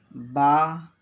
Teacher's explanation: اور با دونوں ہونٹ مل کر کے، دونوں ہونٹ کی تری مل کر کے با ادا ہوتا ہے